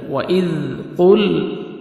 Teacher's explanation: قاف کو موٹا کر کے پڑھنا ہے، لام کو آپ نے ہلانا نہیں ہے